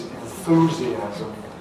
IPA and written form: ɪnˈθuːziæzəm (enthusiasm)